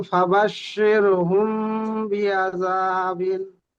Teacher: মিম সাকিনের পরে বা এসছে, তাই মিমকে একালি পরিমাণ গুণনা করে পড়িতে হয়। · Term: ইকফা সাফাবি